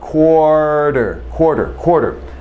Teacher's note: need a quarter quarter is 25 cents right quarter now notice you've got this r which is er it's actually a vowel sound